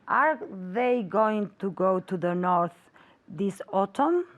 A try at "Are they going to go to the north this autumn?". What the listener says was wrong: Very good. Repeat.